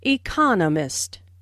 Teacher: four syllables in economist with the stress on the second syllable (e-CON-o-mist). · the stress on the 2nd syllable